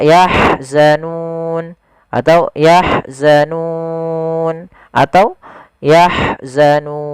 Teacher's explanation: Kita boleh memanjangkan 2 harokat, 4 harokat, ataupun 6 harokat. Maka yahzanun, atau yahzanun, atau yahzanun. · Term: mad arid disukun